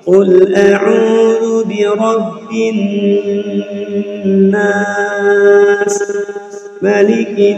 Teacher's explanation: dengung dengungnya dua dua harakat